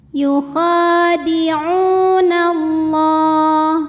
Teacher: Kemudian hukum alif lamnya dinamakan dengan alif lam syamsiyah karena ada alif lam yang menghadapi huruf syamsiyah yaitu lam. Cara membacanya alif lam tidak kita baca · la mad tabi'i muqaddar karena ada baris fathah tegak di atas huruf lam. Cara membacanya dipanjangkan lamnya 2 harokat.